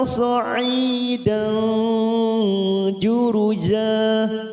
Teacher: Sa'idan ada huruf dal fathah tanwin bertemu huruf jim, namanya bacaan ikfa ausat. Jika diringkas menjadi satu ikfa hakiki, kita samarkan bunyi tanwin pada huruf dal.